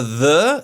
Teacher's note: the D plus H vibrates the vocal cords. The the Meanwhile, the th does not do that.